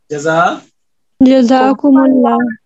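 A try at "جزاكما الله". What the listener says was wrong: नीम पे पेश नहीं आएगी, नीम पे जबर नहीं आएगी।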